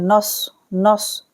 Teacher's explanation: صاد کو سیٹی کے سے پڑھنا ہے اور موٹا بھی پڑھنا ہے